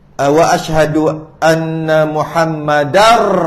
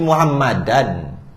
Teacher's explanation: Bila tanwin bertemu dengan ra jadi Muhammadar Rasulullah. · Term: Idgham bila gunnah